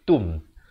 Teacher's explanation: Tum izhar syafawi, bukan tum tapi tum. Tum tak ada bunyi hamasnya, bunyi angin itu.